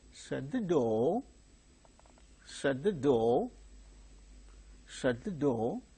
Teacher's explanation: there is a request in that so in such case Rising tone is used